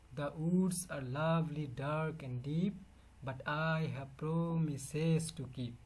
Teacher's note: So this is actually iambic, first syllable unstressed. The woods, the short sound, or so you have to pronounce fast.